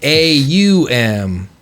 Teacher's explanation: the ah comes from the back of the throat just imagine ah comes from back here then oh is formulated in the mouth and then m is formulated on the lips